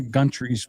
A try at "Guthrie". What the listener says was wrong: Guthrie. There's no N.